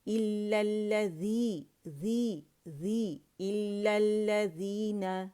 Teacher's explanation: ذی کے لیے آواز دو کاؤنٹ کے نیچے جائے گی، یا مدہ بنے گا